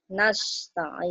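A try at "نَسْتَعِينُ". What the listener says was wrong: Nah, bukan tuh. Itu bukan ja, Bu. Itu bukan tempatnya ja.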